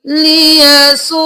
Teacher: واو کو 5 الف کے برابر کھینچا اور حمزہ کو 1 الف کے برابر کھینچا، الٹا پیش ہے، ٹھیک ہے۔